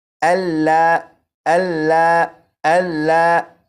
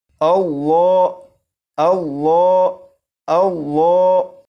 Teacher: لفظ اللہ کے لام کو پور یعنی موٹا پڑھیں گے، اور اسے اس طرح نہیں پڑھیں گے اللہ اللہ اللہ، بلکہ اس لام کو پور یعنی موٹا پڑھیں گے اور اس طرح پڑھیں گے اللہ اللہ اللہ۔